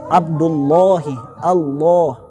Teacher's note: lamnya yang pada saat kalimat Allah itu tebal. Adapun di qiraat yang lain bukan hanya tebal pada saat lafzul jalalah, bahkan pada saat lam yang lain pun kadang mereka tebalkan. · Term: lam yang tebal